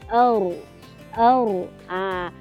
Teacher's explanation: hujung lidah bersama langit atas yang selari dengannya